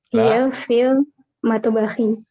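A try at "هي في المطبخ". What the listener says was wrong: Ya, hiya fil matbakhi. Ahsan. Sahih.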